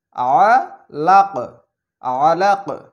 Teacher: সেমভাবে ঠিক একই রকম এখানেও কফ, কফে যদি আমরা থামি তাহলে এখানে জজম দিতে হবে, আর যদি জজম দিই তাহলে এখানে ধাক্কা দিয়ে পড়তে হবে যেহেতু এটা কলকলার হরফ। তাহলে আইন জবর আ, লাম কফ জবর লাক, আ লাক, আলাক।